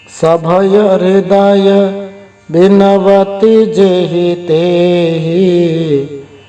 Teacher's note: यहाँ पर प्रथम जो जेहि में जे है वो ए है, होना चाहिए गुरु, लेकिन उच्चारण लघु होता है। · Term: एकार